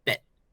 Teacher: you can kind of consider it as a T, but it's not a hard T. It's like a very cut off T.